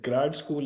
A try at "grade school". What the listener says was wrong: Not grad, grade, not grad, grade, grade school.